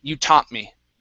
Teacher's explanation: we use what's called a stop t and i do not pronounce that